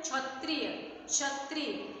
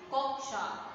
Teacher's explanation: क की ध्वनि कहाँ आ रही है, हम बोल तो रहे हैं क्षत्रिय क्षत्रिय, लेकिन क की ध्वनि हमारे गले तक ही रह जा रही है, वो बाहर नहीं आ रही है। और जब दूसरे वर्ड पर ये होगा छ, तो उसमें क की ध्वनि आएगी, कक्षा।